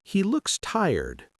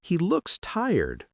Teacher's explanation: if you say, He looks tired, with a rising intonation, it can sound like you're expressing concern or sympathy